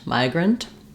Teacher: The pronunciation of migrant, we have first syllable stress.